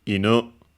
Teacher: low high with the falling accent so it's actually accented